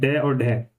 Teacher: तो द्विगुण या उच्छिप्त व्यंजन का मतलब होता है कि इनका उच्चारण करते समय जो हमारी जीभ की जो नोक है या जीभ का जो अगला हिस्सा है वो झटके से नीचे गिरता है